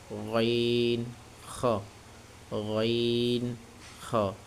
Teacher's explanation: তিন নাম্বার মাখরাজ কণ্ঠনালী শেষ হইতে উচ্চারিত হয় এটা একটু মোটা হবেন